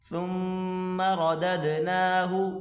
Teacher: سا کو پڑھتے وقت ہلکی سی زبان کی نوک باہر نکال کر اس کو پڑھیں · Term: ثا